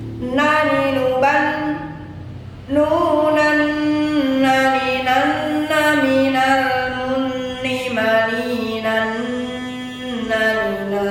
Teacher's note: Nun juga sama, masuk dengan dengung, adalah bacaan idgham bigunah, 2 harokat.